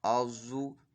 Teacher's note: ضا حرف مستعلیہ میں سے پر پڑھا جائے گا